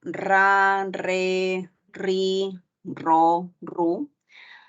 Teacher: Luego tenemos la vibrante múltiple que suena a ra, re, ri, ro, ru.